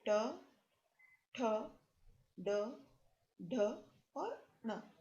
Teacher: इसके पश्चात मूर्धा से उच्चारण होने वाले वर्ण री, ट वर्ग यानी ट, ठ, ड, ढ और न और श, जिसको हम षटकोण वाला भी कहते हैं वह। तो इन सभी वर्णों का उच्चारण मूर्धा से किया जाता है। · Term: मूर्धन्य